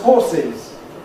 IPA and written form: ˈhɔːsɪz (horses)